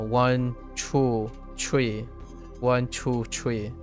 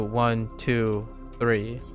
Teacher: deeper Chinese accent will have tree always for the number three